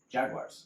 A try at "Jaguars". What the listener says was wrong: That's what you just said with a W. But you just said it with a W. Jaguars. You just used the W. Yes, you did. Jaguars.